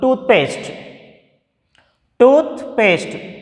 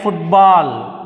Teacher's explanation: it is a compound word that's why we use the stress on the first syllable